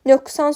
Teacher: q kar samitdən əvvəl gəldiyinə görə q kimi yox, k kimi tələffüz olunur.